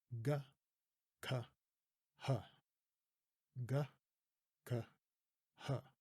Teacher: Did you notice that the h was basically an exhale?